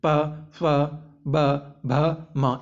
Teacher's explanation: देखिए कैसे, प, फ, ब, भ, म, इन्हें बोलने में है जो हमारा जो होठ है, ओष्ठ है, लिप्स हैं, वो आपस में टच हो रहे हैं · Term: ओष्ठ व्यंजन